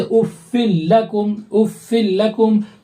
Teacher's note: تنوین جو ہے مکمل طور پر لام میں مرج ہو گئے، ان کی تھوڑی سی بھی آواز نہیں آ رہی ہے۔ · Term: ادغام تام